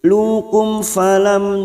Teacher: Lukum falam mim sukun bertemu ya idhar safawi, masing-masing mim sukun dibaca jelas tanpa mendengung